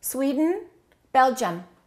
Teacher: So the I and the U sound exactly the same as the E in Sweden.